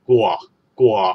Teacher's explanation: 但系呢个▁g▁w▁系有▁w▁音嘅